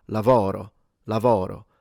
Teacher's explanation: if I had to read lavoro with a Sicilian accent, in fact, I would open the O. I would go to lavoro.